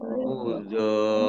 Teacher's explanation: Dibacanya do-nya panjang dulu 5 harokat, baru langsung masuk ke ro. Mudhor. Nah, ini karena ro-nya ini double ya. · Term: mat lazim musaqal kilmi